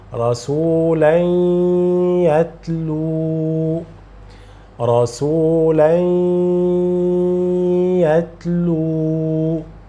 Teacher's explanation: So I am getting the sound from mouth and from the nose. · So the Noon of Tanween will be Ya, because the following letter is Ya. I will pronounce, I will do the nasal sound, and I will prolong the nasal sound duration of 2 harakat. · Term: Ya with Ghunnah, Idgham with Ghunnah